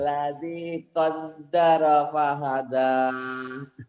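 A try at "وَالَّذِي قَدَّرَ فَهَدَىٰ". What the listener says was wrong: Walladzi kod ya Pak ya, jangan kadaro ya. Qaddaro ya. Walladzi qaddara fahada.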